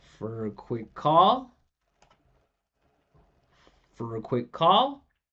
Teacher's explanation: This is a reduction. This is a reduction. Schwa for a.